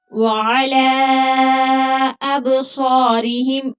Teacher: वाला लाम के ऊपर मद्दे मुनफसिल है क्योंकि हमजा दूसरे कलमा में आ गया है तो 3 अलिफ की मिकदार के बराबर खींच कर पढ़ेंगे